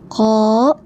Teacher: ini huruf tebal ya, ko, pangkal lidah naik